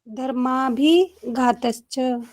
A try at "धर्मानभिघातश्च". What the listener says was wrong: धर्मा नभिघातश्च, ये ना भी साथ में पढ़िएगा। धर्मा नभि, नभि जैसे नाभि होती है तो यहाँ पे नभि है।